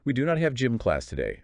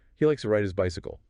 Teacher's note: They're generally read >> uh let's say fairly neutally or flat without a big rise or fall at the very end. >> Just straight delivery >> pretty much.